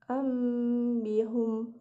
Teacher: Huruf iklab terdapat satu, yaitu ba. Maka ketika ada nun mati atau tanwin bertemu dengan huruf ba, maka nun mati atau tanwin itu harus dibaca mim karena bacaan iklab.